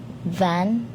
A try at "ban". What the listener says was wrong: B, naging V. Madalas din yung mali ng Pinoy. Ang B, nagiging V.